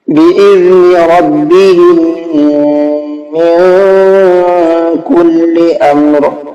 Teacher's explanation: میں نے ہم میں بھی غنہ کیا ہے، من کے اندر اخفا کیا ہے